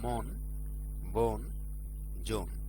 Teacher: একাক্ষর বিশিষ্ট শব্দের আদিতে অ এর পরে দন্ত ন থাকলে সেই অ এর উচ্চারণ ওকার হয় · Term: আদ্য অ